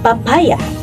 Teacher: P, na kung saan ang paraan ng artikulasyon ng letrang ito ay napabilang sa pasara at walang tunog, at ang punto ng artikulasyon ay napabilang sa panlabi.